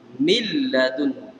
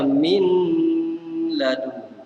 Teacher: seolah-olah nun tak bunyi. Memang tak bunyi. Jadi masuk lam tu. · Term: idgham bila gunnah